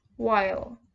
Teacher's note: African American vernacular English speakers also simplify the consonant clusters at the end of the words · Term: consonant cluster simplifications